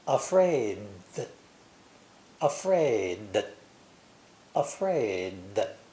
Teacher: to express both the voiced d and the voiced th actually we are not pronouncing the d at all we are stopping and exaggerating the th sound instead